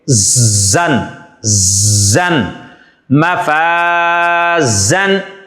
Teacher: یہاں پر زا کی جو آواز ہے اس کے اندر سیٹی سی پیدا ہوتی ہے